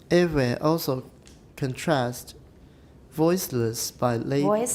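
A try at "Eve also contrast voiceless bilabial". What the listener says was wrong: Bilabial. Don't go down. You're going down to your low range, and it sounds like you're finished. So, voiceless, bilabial, and.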